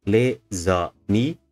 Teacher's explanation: We have 3 syllables, les amis, but the last one is stressed. In this case, this is also an example of where the syllables can bleed into one another.